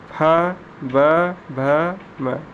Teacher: दोनों ओष्ठ अग्र ऊपर का और नीचे का दोनों ओष्ठ आपस में स्पर्श करता है